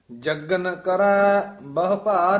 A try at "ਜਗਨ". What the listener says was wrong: ਪਾਠ ਜੱਗਨ ਉਚਾਰਨ ਕਰਨਾ ਹੈ, ਕਸ ਕੇ ਜਗਨ ਨਹੀਂ ਕਹਿਣਾ। ਜੱਗਨ ਕਰੈ ਬਹੁ ਭਾਰ ਅਫਾਰੀ।